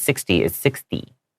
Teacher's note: it has a t but we usually pronounce it more like a d